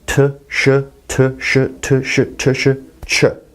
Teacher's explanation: it actually starts out with t and finishes with sh. But you say them quickly enough, t, sh, t, sh, t, sh, t, sh, ch. · But you say them quickly enough, t, sh, t, sh, t, sh, t, sh, ch. Eventually they merge into one sound. That's an affricate.